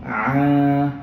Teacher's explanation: belakang so Ain sebutannya dia mendasar dan dia berlemak a Cuba makharijul huruf dia berada di bahagian tengah-tengah tawassut kerongkong Cuba pegang tengah-tengah tekak tengah-tengah leher ada rasa bergetar tak kalau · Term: huruf Ain